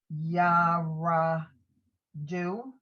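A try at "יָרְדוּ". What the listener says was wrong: Those two sounds are together, so it's just Yardu.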